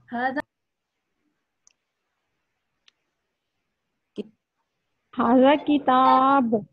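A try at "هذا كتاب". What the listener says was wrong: बहुत लंबा हो गया है, ता बहुत लंबा हो गया है। हाजा किताब, ब ये इसमें बा का हाजा किताब, हाजा किताब।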